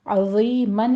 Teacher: आइन को वस्ते हलक से अदा करना है, वा को नरमी से पढ़ना है, यहाँ पे सीटी की आवाज़ नहीं आनी चाहिए और ये पोर पढ़ा जाएगा।